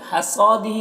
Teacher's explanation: صاد کو پر پڑھیں گے، حروف مستعلیہ میں سے ہے اور الف مدہ ہے 1 الف کے برابر کھینچیں گے، اور یہاں پر ہا کے نیچے کھڑا زیر ہے، یہ یا مدہ کی طرح ہوتا ہے تو اسے 1 الف کے برابر کھینچیں گے۔